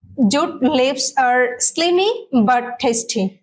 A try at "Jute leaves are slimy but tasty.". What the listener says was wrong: মাশাআল্লাহ, খুব সুন্দর বলেছে।